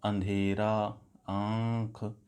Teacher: कुछ जो हवा है वो ऊपर की तरफ बढ़ती है और वो नाक से निकलती है, यही इसकी पहचान होती है। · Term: अनुनासिक